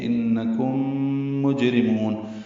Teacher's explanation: قلیلا انکم، نون مشدد پہ غنہ ہے، آواز ناک کے بانسے میں جائیں گے. کم میں میم ساکن کے بعد میم آئی ہے، یہ میم مشدد ہو گئی، غنہ کریں گے. یہاں پہ ادغام مثلین یا ادغام شفوی ہے.